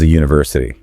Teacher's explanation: the word university starts with a vowel letter, but phonetically it begins with a hard consonant Y sound.